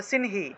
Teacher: অনুস্বার শব্দের মাঝখানে থাকায় ন এর মত উচ্চারণ হয়েছে